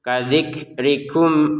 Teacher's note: huruf kafnya ya ada keluar nafas sedikit